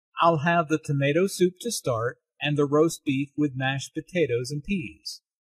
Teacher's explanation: tomato soup roast beef mashed potatoes and peas are stressed because the food order is the important information here